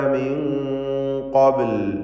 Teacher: ശേഷം ഖാഫ് വന്നതുകൊണ്ട് മണിക്കലിൽ തഫ്ഖീം വരണം. മിൻ എന്നത് വ്യക്തമാവാതെ മിൻ ഖബ്ൽ എന്ന് അവ്യക്തമാക്കി മണിച്ചുകൊണ്ട് തഫ്ഖീമോട് കൂടി ഉച്ചരിക്കുക. ഖാഫിന് പൂർണ്ണമായ തഫ്ഖീം നൽകണം. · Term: ഇഖ്ഫ ഹഖീഖി